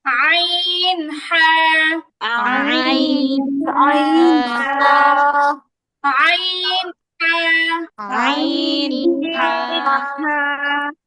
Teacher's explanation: দুই নাম্বার মাখরাজ কন্ঠনালীর মধ্যভাগ থেকে